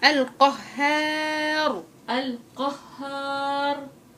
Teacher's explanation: الهاء مرققة والألف وراها مرققة